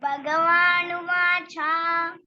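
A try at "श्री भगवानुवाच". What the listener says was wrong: Shri Bhagavanuvacha. శ్రీ అనట్లేదు, వినిపించట్లేదు నాకు.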